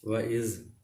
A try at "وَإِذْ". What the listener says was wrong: یہ آپ کی آواز آ رہی ہے. وَإِذْ